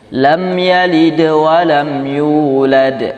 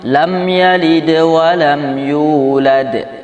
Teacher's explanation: Kalau qalqalah sughra ini dia sepintas lalu saja. Ya, lewatnya agak cepat dan pantulannya kecil.